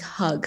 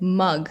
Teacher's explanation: You keep your mouth open and you pronounce it more back than more like forward.